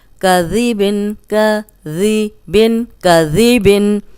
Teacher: ذال کو ہم نرم پڑھیں گے، اس میں سیٹی کی آواز نہیں آئے گی، اور اوپر سامنے کے جو دو دانت ہیں ان کے اندرونی کنارے پہ زبان رکھ کے ادا کریں گے تو سیٹی کی آواز نہیں آئے گی، ورنہ یہ زا بن جائے گا.